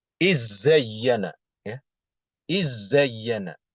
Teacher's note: Di sini bacaan Imam Hisham adalah dengan mengidghamkan dal ke zai.